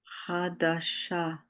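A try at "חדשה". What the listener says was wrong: Yep, that's new.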